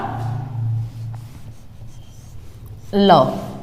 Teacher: जीभ के अगल बगल में से हवा बाहर निकल जाती है, श्वास बाहर निकल आती है वायु। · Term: पार्श्विक